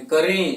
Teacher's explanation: इसका उच्चारण हम मुख और नासिका से करेंगे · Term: अनुनासिक ध्वनि